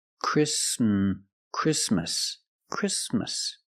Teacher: The T is between consonants, so it is silent. Link the sound s with the m.